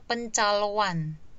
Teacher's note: kalau kita lafalkan dia pencaloan. Berarti ada luncuran W. Kenapa ada luncuran W?